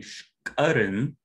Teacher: So in three, you see shkaren, which means to drive, and it bears stress on its first syllable